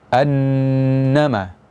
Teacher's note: Yahsabu annama, annama, ya. Terdapat gunnah atau dengung karena nun bertasydid.